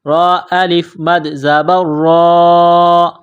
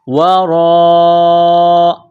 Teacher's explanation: بما وراءہ، واو کو پڑھتے وقت ہونٹوں کو گول کرنا ہے، را کے اوپر زبر ہے، را کو موٹا کرنا ہے